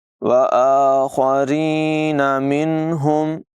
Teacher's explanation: خا کی آواز پر ہوگی، را کو باریک پڑھیں گے